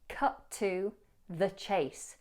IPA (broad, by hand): kʌt tə ðə ʧeɪs